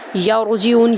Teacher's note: ہے۔ لام کو ایک الف کے برابر لمبا کریں گے، یرجعون، یا کو را میں داخل کریں گے، پر کریں گے را کو ، جیم کو ہم لمبا نہیں کریں گے، صرف زیر ہے،